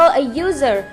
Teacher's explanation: U merupakan huruf vowel atau vokal, tetapi it sounds like user. Jadi kayak pakai y